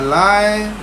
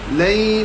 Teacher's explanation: Lay bukannya lai. Kalau lai itu lahjah Melayu, lahjah Arab lay.